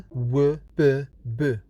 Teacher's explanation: 4 consonants that are produced using both lips, and it is called bilabial